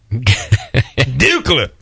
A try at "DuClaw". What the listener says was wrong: He put the wrong emphasis on the word, right?